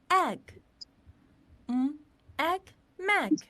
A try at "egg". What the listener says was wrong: Whoa, that's right.